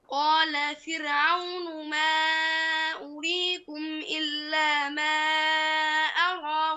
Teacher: كلمة فرعون في القرآن كلها مرققة، فانتبه لترقيق الراء فيها في القرآن كله